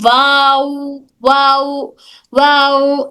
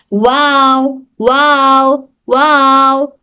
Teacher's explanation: वाव अदा करते वक्त में हमारे किनारे होंठ गोल होते हैं, लेकिन ये दोनों किनारे एक दूसरे से हरगिज नहीं मिलते। वाव, देखिए बीच में होल कैसा है, यहाँ पर इस तरह से होल होती है, वाव वाव वाव, ठीक है।